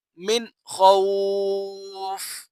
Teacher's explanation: یہاں پر بھی نون ساکن ہے، نون ساکن کے بعد جو خا ہے وہ حروف حلقی میں سے آ رہا ہے، یہاں پر اظہار کا قاعدہ لگے گا، تو یہاں پر بھی ہم غنہ نہیں کریں گے. وقف کی صورت میں ہم اسے پڑھیں گے من خوف.